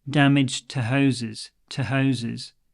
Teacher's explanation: just a very very soft and very short T sound